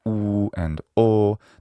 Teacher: in certain vowels like oo and o, the lips are rounded. But in other vowels like e, a, a, those vowels are unrounded.